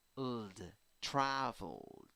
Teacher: because the verb finishes in l, the original verb, the base form of the verb, in l, the l sound, then ed has to sound like d · both l and d produce vibration right here on your vocal cords. Okay, so ld, traveled.